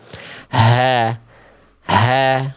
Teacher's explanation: yang dibaca bukan H kecil, tapi H besar dari pangkal tenggorokan